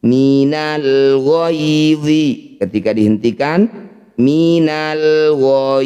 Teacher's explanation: Cara bacanya bunyi ya baca lembut. Caranya berikan huruf vokal i bukan e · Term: madlin